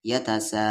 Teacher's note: یا پہ زبر یا، تا پہ زبر تا، سین کے ساتھ الف سا، یتسا۔ مد کے سمبل کے بعد حمزہ ہے تو اس مد کو 3 سے 4 الف کے برابر کھینچیں گے